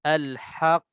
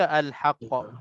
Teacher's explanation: kedua-dua qaf yang sabdu ni, kita nak kena lambatkan supaya qaf yang mati yang pertama ni wujud.